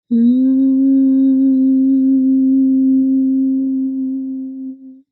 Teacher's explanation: back of your tongue hmm [Music] when you're doing it correctly when you have just enough pressure with the back of your tongue to the top of your mouth and you get that kind of vibration in your nasal cavities